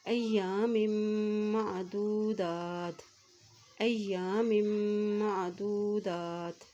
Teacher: دال کے اوپر کھڑی زبر ہے تو یہاں پر اس کو ایک حرکت لمبا ادا کریں گے